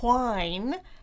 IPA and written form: ʰwaɪn (whine)